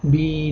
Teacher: kasradan so'ng sukunli ya kelishi bilan biz 2 harakat miqdori cho'zib bi deb o'qigan edik